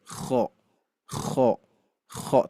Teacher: Nah, getaran di sini bukan getaran takrir gitu ya, tapi bunyi dari pergesekan di antara tenggorokan bagian atas atau pangkal lidah paling dalam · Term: huruf kho